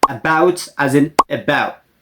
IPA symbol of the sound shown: ə